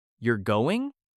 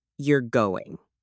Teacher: say, you're going with a rising tone that sounds like a question. But say you're going with a falling tone, that's a statement.